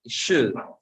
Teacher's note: La L con la D es sonido especial. La L no suena